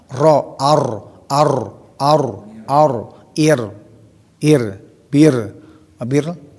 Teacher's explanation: Ro yang paling dominan ya takrir. Ya ada getaran.